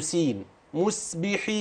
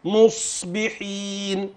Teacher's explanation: تليها اخر اللسان ان لم تشعر به ارتفع سيكون س مسبح ان ارتفع اقصى اللسان واستعلى ارتفع استعلى واصبح مطبقا للحنك الاعلى ستكون صادا صحيحه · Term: سين, صادا صحيحة